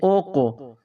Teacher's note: حروف قلقلہ ہے تو یہاں پر قلقلہ کریں گے، جنبش دیں گے، یعنی ساکن حرف کو کچھ ہلا کر پڑھیں گے